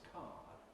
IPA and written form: kɑːd (card)